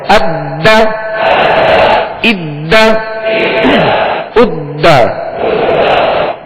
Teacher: یہ حروف قلقلہ میں سے دال ہے، لہذا اس کو جماؤں کے ساتھ، خوب جماؤں کے ساتھ پڑھنا ہے